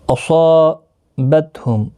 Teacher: اصابتہم، صا الف مدہ ہے، 1 الف کی مقدار کے برابر کھینچ کر پڑھیں۔ صاد حروف مستعلیہ میں سے ہے تو جب ایک ہی کلمے کے اندر مستعلیہ کے ساتھ الف بھی آتا ہے وہ بھی پر پڑھا جاتا ہے